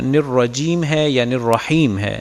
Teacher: را کی ادائیگی میں آواز ناک میں گئی ہے، تو کوشش کریں را خالصتاً اپنے مخرج سے ادا ہو، اس کی آواز ناک میں نہ جائے، چونکہ ناک میں صرف 2 حرف جس میں نون ہے اور میم شامل ہیں، ان کی آواز ناک میں جاتی ہے۔